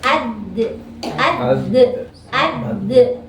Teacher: ujung lidah dengan pangkal gigi seri atas